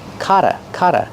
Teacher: The double T makes a fast D.